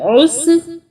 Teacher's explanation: عین جو ہے یہ حلق سے نکلے گا